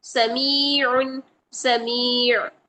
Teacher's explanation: عین کی آواز کو برقرار رکھنا ہے، سمیع نہیں کرنا ہے، حمزہ نہیں بنانا